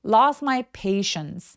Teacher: lost my t음을 하지 않아요. 이거 이유는 뭐냐면 STM처럼 이렇게 자음이 세 개가 붙어 있으면 중간에 낀 T 소리들이 보통 많이 없어져요.